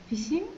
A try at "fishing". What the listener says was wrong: Fishing, yes, fishing. The S doesn't sound as much when there's the H. It's a sh sound and not a s sound.